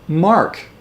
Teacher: the r and the K are Blended at the end